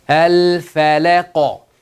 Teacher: So the first example is qaf sakin. When we stop, we make the qaf sakin. We do the qalqala on this. Al-Falaq. The rule of thumb is qalqala of the thick letter like qaf, ta.